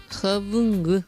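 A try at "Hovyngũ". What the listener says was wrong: Eso. Hobu es el azul.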